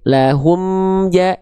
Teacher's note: bacaan ini mim sukun dibaca jelas tanpa dengung. Ya, artinya tanpa dengung di sini artinya tidak ditahan. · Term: Idhar syafawi